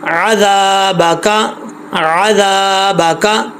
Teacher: दाल के आगे अलिफ है, लंबा करेंगे एक अलिफ की मिकदार